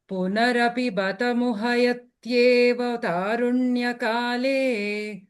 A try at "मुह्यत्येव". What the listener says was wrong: That ha is not full ha, muha. It is muhyat only. Muhayat you chanted, no muhyate.